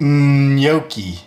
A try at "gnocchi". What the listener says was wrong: Got to get that Y sound in there.